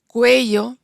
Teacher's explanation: en cuello, la vocal es tónica, la UE es tónica, por eso en esta palabra sí tenemos el diptongo.